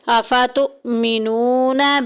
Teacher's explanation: واو پیچھے پیش واو مدہ کا قاعدہ جاری ہو رہا ہے ایک الف کے برابر لمبا کریں گے